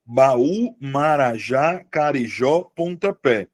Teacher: Marajá também tem a sílaba tônica no final.